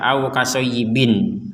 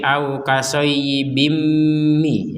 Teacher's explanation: Nah, seakan-akan kalau sudah namanya dimasukkan, maka tanwinnya ini seakan-akan bukan tanwin lagi ketika membacanya, tapi kasroh satu, bukan kasroh dua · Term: dimasukkan ke mim